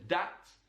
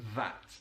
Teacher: The one feature that we heard there is the D sound instead of the.